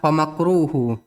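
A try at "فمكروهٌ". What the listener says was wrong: Tanwin.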